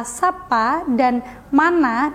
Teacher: vokal a dalam kata sapa dan mana dianggap sebagai vokal oral karena pengucapannya Tidak melibatkan rongga hidung